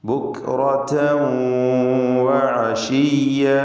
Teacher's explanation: റാഇന് തഫ്ഖീം കൊടുക്കുക, തടിപ്പിച്ച് സ്വരഭാരത്തോടെ റാ ഉച്ചരിക്കുക. തൻവീൻ വന്നത് ശേഷം വാവ് ഉള്ളതുകൊണ്ട് തൻവീനിനെ വാവിലേക്ക് ലയിപ്പിച്ച് മണിക്കണം. ഇദ്ഗാം ബിഗുന്ന നാഖിസ്.